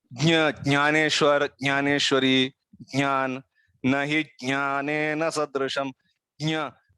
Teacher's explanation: It is like trying to pronounce ja only, but through your nose, basically.